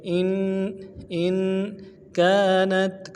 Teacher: حمزہ کو نون کے ساتھ ملانا ہے، نون ساکن غنہ کریں گے